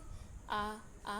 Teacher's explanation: कंठ से आ बोले जाते हैं